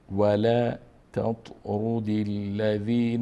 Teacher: اینجا ت مرقق خوانده میشه و توی مفخم